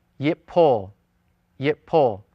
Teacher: In every form of the type 1 and in most forms of the type 2, the initial root consonant noon has assimilated into the second root consonant, and it's represented as a dogish forte.